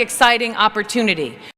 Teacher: The sound T changes into D sound when they are between two vowels